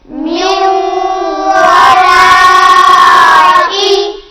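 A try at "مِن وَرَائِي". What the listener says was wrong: और लंबा कीजिए। मिन वराई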